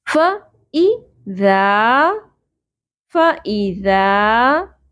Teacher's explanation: ذال نرمی سے ادا کرتے ہوئے زبر کے ساتھ الف حرف مدہ ایک الف کے برابر کھینچیں گے